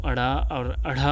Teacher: दोस्तों, यदि इस वर्ण का उच्चारण करेंगे तो झटके के साथ नीचे गिरता है, जीभ का जो अग्रभाग है वो झटके के साथ गिरता है, इसलिए इसे उक्षिप्त व्यंजन कहते हैं।